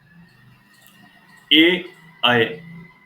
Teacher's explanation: ए, अय बोलते समय कंठ और तालु दोनों ही हमारे सक्रिय हैं। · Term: कंठ तालु